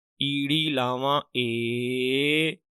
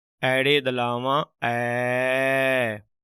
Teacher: ਲਾਂ ਥੋੜਾ ਜਿਹਾ ਮੂੰਹ ਘੱਟ ਖੁੱਲਦਾ ਤੇ ਦੁਲਾਮ ਬੋਲਣ ਲੱਗਿਆਂ ਥੋੜਾ ਜਿਹਾ ਮੂੰਹ ਵੱਧ ਖੁੱਲਦਾ